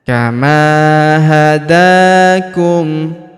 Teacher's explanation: Huruf da kita panjangkan 2 harokat karena alif kecil di atasnya.